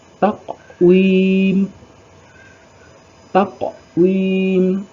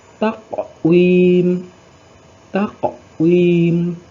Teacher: Huruf qalqalah sughra di sini adalah huruf qaf yang disukun. Bunyi pantulannya kecil.